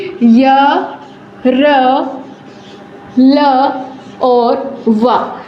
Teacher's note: अंतस्थ व्यंजन का उच्चारण करते समय हमारी जो जीवा है वो मुख के अवयव को बहुत हल्का सा स्पर्श करती है